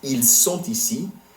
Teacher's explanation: the reason the T in sont becomes pronounced is because ici starts with a vowel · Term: la liaison